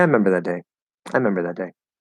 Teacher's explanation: particular word would be the special case where for some reason we're just kind of dropping that first syllable